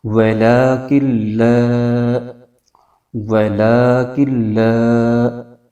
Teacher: کاف جو ہے وہ لام کے ساتھ مل کر پڑھا جائے گا، بیچ میں نون کی آواز نہیں آئے گی